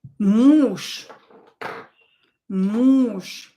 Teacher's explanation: Again, we have Ж here, but I pronounce it as ша.